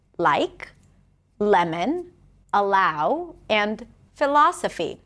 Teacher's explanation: the light L that appears before a vowel or the beginning of words